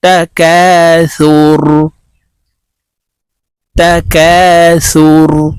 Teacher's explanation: র কে ওয়াকফুর ক্ষেত্রে সাকিন করে ফেলবো